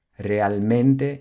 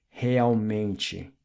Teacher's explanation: the last part of the word is pronounced ''meng-chi'', not ''mente'' since the ''t-e'' at the end of words are always pronounced ''chi''